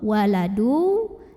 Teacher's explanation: ada tanwin lemah yang bertemu dengan huruf wow maka cara membacanya tanwinnya masuk ke Waw · ke Waw waladu dan dengungkan masuk disertai dengung berarti di sini harus kita tahan dulu bunyinya sampai ada suara masuk hidung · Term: idgham bighunnah